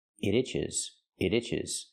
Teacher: You hear the T and it pronounces a fast D.